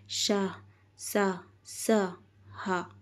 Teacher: वायु घर्षण करती हुई बाहर निकलती है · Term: उष्म व्यंजन